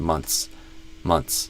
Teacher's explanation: And sometimes you can kind of delete the th uh in like the word months. We have a th plus s, but we often just kind of do a ts sound.